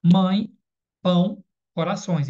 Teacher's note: Lembrando que o tio, o som é anasalizador, né? O som sai pelo o nariz.